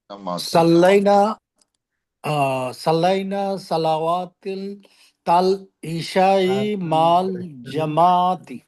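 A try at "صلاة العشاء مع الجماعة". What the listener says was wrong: হ্যাঁ, আর একটা দেখেন, সলাওয়াত বলা যাবে না, সলাতাল জামাতি। ওয়াও শব্দ লেখায় আসবে, উচ্চারণে আসবে না। হ্যাঁ, সলাতাল জামাআতি মাল জামাআতি।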